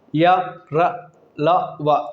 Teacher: कम वायु निकल रही है। इसका मतलब ये है कि ये अल्पप्राण वर्ण है।